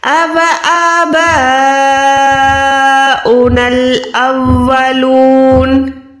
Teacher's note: अलिफ के ऊपर खड़ी जबर है तो आपने आ करके पढ़ना है, अ नहीं है, ठीक है। इसको कम से कम 1 सेकंड लंबा करना है।